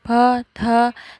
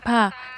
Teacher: Tionghoa mempunyai bunyi seperti p, th, seperti mengucapkan pa sambil menghembuskan napas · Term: hembusan nafas